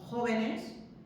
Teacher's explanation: fijaos que sigue manteniendo la misma sílaba tónica, que es jo